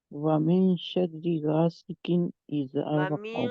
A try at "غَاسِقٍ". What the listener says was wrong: गासिकिन, गासिकिन, गा एंड गा मोटे हैं तो इनको मोटा करें। अगर अभी आपका किन जो है, जिसको इसको आप नहीं मोटा कर रहे, किन, गासिकिन।